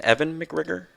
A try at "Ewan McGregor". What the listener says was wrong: No, it's a W, man. Yeah, it's like Ewan.